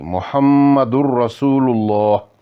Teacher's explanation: محمد الرسول اللہ، اتھے میم نا غنہ بھی آ اور دال اوپر تنوین ہی، اور تنوین تھی بعد را آئی، اس واسطے انہاں نا ادغام ہو سی لیکن نون نی آواز باقی نہیں دینی